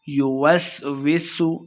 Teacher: سین پہ سیٹی کی آواز آئے گی۔ فی صدور الناس، صوت کو موٹا پڑھنا ہے، نون مشدد غنہ کر کے پڑھیں گے۔